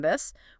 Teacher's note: voiced T like in this where you feel a bit of vibration in your vocal cords.